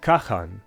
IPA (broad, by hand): kaxan